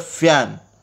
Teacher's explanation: In the production of the F sound in the English word fan, the lower lip is the active articulator and the upper teeth are the passive articulator